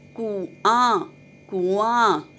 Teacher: कु के साथ अनुनासिक की आवाज़ नहीं आ रही। आ के साथ, आ लास्ट में देखिए आ है, उसके साथ अनुनासिक की आवाज़ आ रही है, तो हमने चंद्रबिंदु यानी अनुनासिक आ के साथ लगाना है।